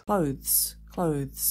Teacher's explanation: I would argue that it's an extended vowel sound, but one syllable only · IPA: /kləʊ/ and /ðz/